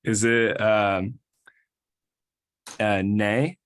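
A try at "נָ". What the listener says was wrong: Okay, but the vowel is ah, so it will be. No, that's a ni, e.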